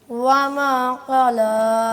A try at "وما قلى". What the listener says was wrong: कला नहीं, क़ला, कौफ को मोटा करके पुर करके पढ़ें जी।